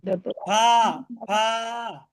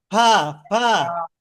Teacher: নিচের ঠোঁটের পেট, সামনের উপরের সামনের উপরের দুই দাঁতের আগার সঙ্গে লাগাইয়া